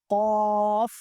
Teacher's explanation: زبان کی جڑ، تالو کا نرم حصہ لہات کے قریب سے ادا ہوتا ہے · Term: حروف لہاویہ